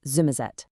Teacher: a really classic feature is how an S can turn into a Z sound, which is how you get the famous pronunciation of Somerset as Zummerzet. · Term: West Country accent